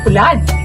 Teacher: At ang letrang U, tulad ng O, pero mas masikip ang labi at mas bilugan.